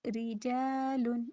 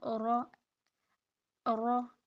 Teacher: اور جب را کے نیچے زیر ہوگی تو بریک ادا کریں گے ہم پھر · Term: بریک را